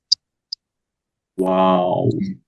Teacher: ওয়াওটার ক্ষেত্রে প্রথমে ঠোঁটটা গোল থাকবে, তারপরে কিছুটা স্বাভাবিক আসবে, আবার শেষ উচ্চারণের সময় ঠোঁট আবার গোল হয়ে যাবে। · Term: ঠোঁট গোল